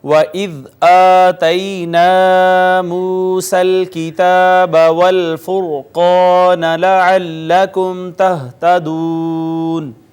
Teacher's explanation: ذال نرمی سے ثنایا اولیاء کا کنارہ اور نوک زبان سے ادا ہوگا · قاف حروف مستعلیہ میں سے ہے، اس کو بھی مفخم پر کر کے پڑھیں گے